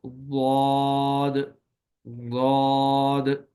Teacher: صرف ایک صفت جس کو صفت استطالت کہا جاتا ہے وہ ضاد کے اندر اضافی طور پر موجود ہے، اور صفت استطالت میں ضاد کی ادائیگی کے وقت دیر زیادہ لگتی ہے اور زبان کی کروٹ کو داڑوں کے ساتھ لگایا جاتا ہے